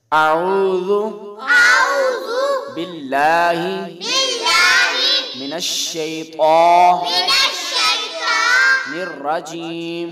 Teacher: تعوذ میں پہلے الف پر زبر ہے، اس کو ہم لمبا نہیں کریں گے۔